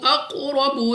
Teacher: را پر زبر، تو را کو پر یعنی موٹا پڑھنا ہے، منہ اور آواز کو کھول کر